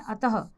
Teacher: विसर्ग का उच्चारण हल्के ह के रूप में किया जाता है